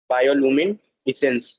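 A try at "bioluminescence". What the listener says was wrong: इसेंस, हाँ, अब जोड़ दो।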